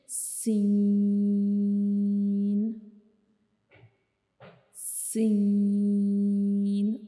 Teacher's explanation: لیکن سین کو پڑھتے ہوئے کیا ہوگا کہ ہماری زبان کی جو نوک ہے وہ مسوڑوں کو ٹچ نہیں کرے گی، لیکن اس سے تھوڑے سے فاصلے پہ جو ہے وہ ٹچ کرے گی. تو ہم سین کو ادا کریں گے اور ہمارے اوپر والے اور نیچے والے دانت آپس میں ایک دوسرے کو ٹچ کریں گے سین کو پڑھتے ہوئے.